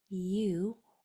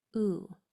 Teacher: U actually has two long sounds. It can say its whole name, U, or just that last part, U.